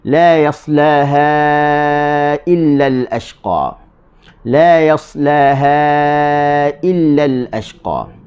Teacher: alif ataupun ada ombak di atasnya, selepasnya ada hamzah, baca dengan panjang 4 harakat. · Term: mad jaiz